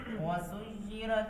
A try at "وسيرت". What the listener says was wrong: रा बरीक नहीं है, रा मोटी है। वसुय्यरत الجبال फकानत सराबा।